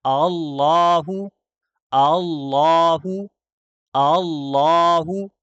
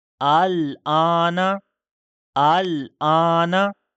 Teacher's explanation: دوسرا حمزہ ہم واضح نہیں کر رہے، تسہیل میں پڑھ رہے ہیں نرمی سے